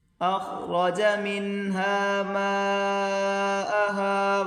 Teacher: یہاں اوپر بڑی مد اس کو کھینچ کر پڑھیں گے 4 الف کی مقدار